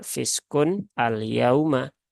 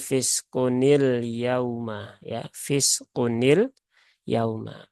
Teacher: pertemuan dua huruf sukun nunnya diberikan harakat kasrah